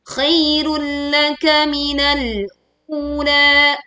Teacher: ya kita leburkan ke huruf lam tanpa disertai dengung. Khairul laka minal ula, minal, tekan huruf lam sukun.